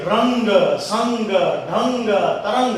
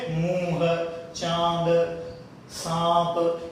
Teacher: ये बोलेंगे हवा नाक से निकलेगी, और ये बोलेंगे हवा बढ़ जाएगी, मुख और नाक दोनों से निकलेगी